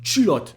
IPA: tʃylɔt